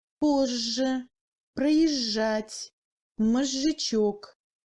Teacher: La combinaison du Z avec le G se prononce comme J long à l'intérieur du mot.